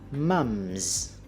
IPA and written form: mɑmz (Mom's)